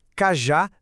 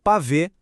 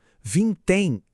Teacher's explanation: Aqui a lógica é que a sílaba mais forte é sempre a última da palavra. Toda a energia da pronúncia tá ali no final. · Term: oxítonas